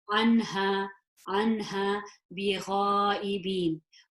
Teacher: This is a her, the deep one, and that is a throat letter. So I would pronounce this noon nice and clearly, no gunna.